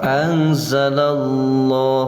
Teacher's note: Anzalallah, lohnya tafim tebal karena lafdul jalalah sesudah patah, bacaannya tafim atau tebal. Dan di sini ada patah berdiri, namanya mad tabi'i atau mad asli.